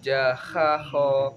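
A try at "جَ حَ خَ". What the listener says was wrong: Jahanya hanya enggak kha tapi ha. Jaha kho. Kho.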